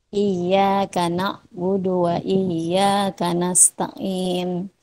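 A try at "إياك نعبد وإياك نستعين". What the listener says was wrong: Iyyaka na'budu wa iyyaka, ditahan ya-nya.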